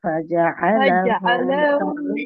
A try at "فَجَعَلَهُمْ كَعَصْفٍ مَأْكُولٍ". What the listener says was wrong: فجعل لام টান হবে না فجعلهم كعصف مأكول فجعل লামে টান হয়ে যাবে লামে টান হবে না فجعلهم كعصف مأكول